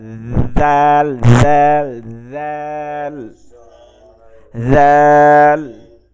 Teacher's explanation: জিব্বার আগা, দুই দাঁতের আগা